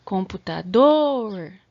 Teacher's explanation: A sílaba tônica foi a última